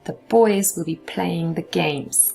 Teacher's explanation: boys play games will take approximately the same amount of time as saying the boys will be playing the games